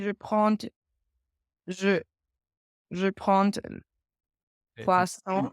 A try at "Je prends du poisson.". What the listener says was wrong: Le D il est silencieux.